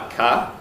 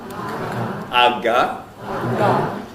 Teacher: then we call back tongue to soft palate velar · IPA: [ɑkɑ]